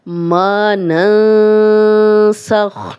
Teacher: من احد حتی ما ننسخ من آیت او ننسیہا، ما ننسخ، اب نون ساکن تھا، آگے سین آ گیا تو ہم غنہ کر رہے ہیں